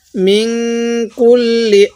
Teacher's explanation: এই নুন সাকিনের মধ্যে আমরা গুনাহ করব